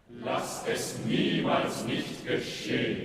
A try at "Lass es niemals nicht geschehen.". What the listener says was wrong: No, but she does an inflection. She goes, niemals nicht geschehen, not niemals nicht geschehen. It's not a sack of potatoes on every note.